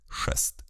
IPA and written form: ʂɛst (шест)